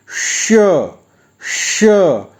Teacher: इसको उच्चारण के लिए जीभ को, जिह्वा को थोड़ा मोड़ें और मूर्धा से स्पर्श कराते हुए श की ध्वनि निकालें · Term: षटकोण वाला श